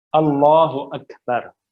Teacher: یہاں پہ کاف حرف ہمز ہے اور سکون میں آ رہا ہے. تو اب یہاں پہ ہمیں صفت ہمز کو لانا ہے.